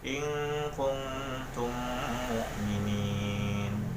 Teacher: apabila mim mati bertemu dengan mim, sehingga dalam pembacaannya harus didengungkan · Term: idgham mimi